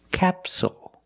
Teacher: the stress is on the first syllable, so the second syllable is short. It's not capsule, it's capsule, with a dark L at the end.